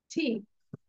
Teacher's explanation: আমরা সবাই টি বলি না এটা হবে টি একটু ধাক্কা দিব এবং বাতাস বের হবে